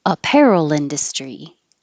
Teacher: in the word industry in is going to be stressed